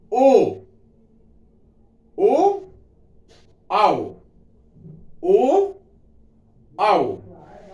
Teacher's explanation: जब ओ बोलेंगे तो उसमें तो ओठ पूरा नहीं मिलता · अर्थात ओ और औ का उच्चारण स्थान क्या होगा, कंठोष्ठ होगा